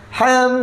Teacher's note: Bila kata dengung, maka mesti ada kaitan huruf selepasnya. Maka kat situ mim dengan mim. Maka mim dengan mim tutup mulut. Jadi dia memang sifat yang sama. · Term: idgham bi gunnah musyaddad